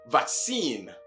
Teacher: Whilst the last syllable is also pronounced seen to sound vaccine. In the American version, however, the first syllable takes the secondary or the weaker stress